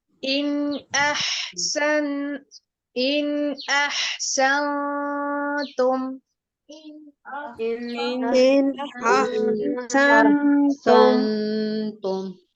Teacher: نون ساکن ہے، اس کے بعد حروف حلقی میں سے حمزہ آ رہا ہے، اس وجہ سے ہم نون کے اوپر کوئی غنہ نہیں کریں گے